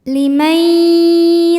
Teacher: Sebab nun sukun menghadapi huruf ya, maka nunnya masuk ke ya disertai bunyi dengung. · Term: idgham